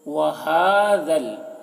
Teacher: हा की आवाज़ भारी होगी और ज़ाल की आवाज़ बारीक होगी। वहाज़ल, ये दोनों अलिफ को नहीं पढ़ा जा रहा, ज़ाल को लाम के साथ मिलाकर वहाज़ल, ज़ल ज़ल बोलना है, ज़ल नहीं।